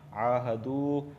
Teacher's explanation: عاہدو، عین کھڑا زبر آ، کھڑا زبر کو ایک الف کے برابر کھینچ کے پڑھتے ہیں۔ عاہدو واو ساکن سے پہلے پیش آیا ہے دال پر، اس وجہ سے میں دو کو بھی ایک الف کے برابر کھینچ کے پڑھ رہا ہوں